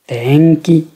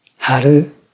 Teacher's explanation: La deuxième forme d'accentuation, c'est l'accentuation atamadaka gata, accentuée au début. La première mora est haute, et ensuite le son chute. On a une prononciation haute, basse, basse.